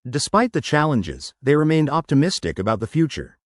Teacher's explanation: Emphasize, challenges, optimistic, and future, and blend, remained optimistic. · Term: rhythm